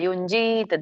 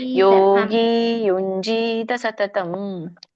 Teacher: ಯುಂಜಿತ್ ಅಲ್ಲ, ಯುಂಜೀತ ದೀರ್ಘ ಇದೆಯಲ್ಲ ಮಾತಾಜಿ